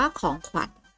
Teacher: คำว่าขวัญคำนี้อ่านออกเสียงขอไข่และวอแหวนพร้อมๆกัน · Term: คำควบกล้ำแท้